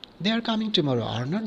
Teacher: confirmation but when you say they are coming tomorrow or not the rising tone indicates a lesser degree of certainty and the question tag functions more like a question for information